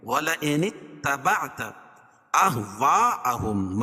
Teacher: وصل کی صورت میں یہ الف جو ہے یہ حذف ہو جائے گی، گر جائے گی، تو یہ نون کو تا میں ملائیں گے